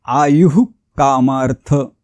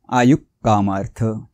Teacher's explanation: विसर्गाच्या पुढे जर क आला तर विसर्गाचा उच्चार अर्धा करायचा आहे म्हणून इथे आयुक्मार्थ असं न करता आयुक् कामार्थ ठसका लागल्यासारखा उच्चार